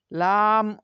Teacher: জিহ্বার আগার কিনারা সামনের উপরের দাঁতের মাড়ির সঙ্গে লাগিয়ে লাম উচ্চারিত হয়